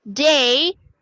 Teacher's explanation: If you notice, I use the D, regular D, and for the A sound, I use this diphthong EI for A sound